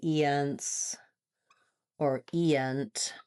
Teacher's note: that vowel is shorter in duration, but it still has the tense sound.